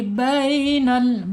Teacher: Bihi bainal ya, lin ya, bacaan lin miring karena ya sukunnya sebelumnya harokatnya fathah, miring ya, halus dibacanya